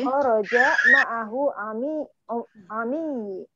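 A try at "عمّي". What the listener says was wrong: Ini tasjidnya ditaruh di mim. Ammi, pamanku.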